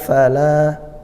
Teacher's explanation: fala mad tabi'i fathah di alif, panjangnya 1 alif atau 2 harokat